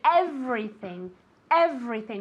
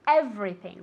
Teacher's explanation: With that V sound moving your vocal cords.